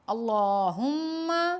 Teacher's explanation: اللہ کے لام کو موٹا پڑھیں گے